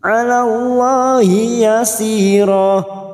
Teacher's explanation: lam jalalah yang sebelumnya fathah kita baca tafkhim